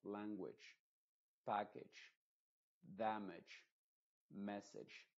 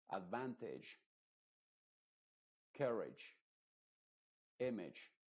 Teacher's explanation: esta I se pronuncia como una E nuestra, pero muy apagada, que no se note tanto. Y no abras tanto la boca tampoco. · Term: I modificada